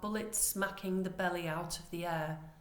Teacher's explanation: The plosive B sounds in bullets and belly emulate the sound of the bullets aggressively exploding from gun barrels, because plosive sounds are very aggressive.